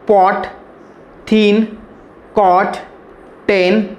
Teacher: we heard that there is no any kind of vibration or hum sound is created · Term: voiceless sounds